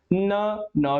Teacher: न भी दंत के साथ टच हो रहा है